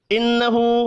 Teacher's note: نون مشدد پر غنہ کریں گے، الٹا پیش ایک الف کے برابر کھینچ کر پڑھا جائے گا.